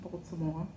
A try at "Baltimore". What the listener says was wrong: You gotta let it roll out the tongue. Baltimore. Stop pronouncing the T. It's Baltimore. Baltimore. It's Baltimore, like a bald head. Baltimore.